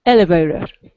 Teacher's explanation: it's the first syllable gets the stress in elevator